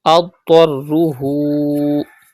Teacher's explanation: Pronounce dod and ta with thicker voice because they are from mustaliya letters.